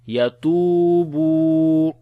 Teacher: Ta and ba we long due to waw madda.